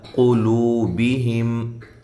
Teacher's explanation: قاف کو موٹا کریں، واو مدہ